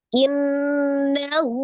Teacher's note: Innahu, ini ada nun tasdid ya, gunnah musaddada ya, akmal matakun, nun tasdid wajibul gunnah, gunnahnya paling sempurna, akmal matakun ya, nun musaddada. Jadi dibacanya ditekan dan ditahan, suaranya dimasukkan ke dalam rongga hidung. · Ya, maka ini dinamakan mad silah sughra ya, mad silah kecil ya, atau mad silah qasirah kalau disebut nama lainnya ya, mad silah sughra, dibaca 2 harokat